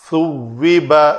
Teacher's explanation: هل ثوب ثا ذال ضا، ثوب، زبان جو ہے وہ زبان کی نوک لسان جسے کہتے ہیں وہ دونوں دانتوں کے درمیان آئے